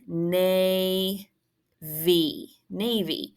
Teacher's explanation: nay V Navy long a open syllable V long vowel because that y sounds like a long e in a multi-syllabic word